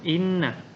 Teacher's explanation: inna itu pembacaannya gunnah, disebabkan karena ada nun yang bertasydid atau syiddah.